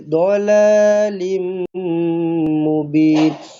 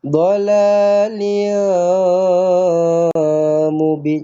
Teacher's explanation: rapatkan bibir terus jumpa dengan mim sabdu eh idgham alghunnah